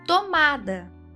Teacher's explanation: tomada tônica na penúltima, ou seja, paroxítona.